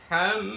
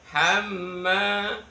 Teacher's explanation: Setiap kali ada mim tasdid maka wajib dibaca guna. Guna itu mendengung.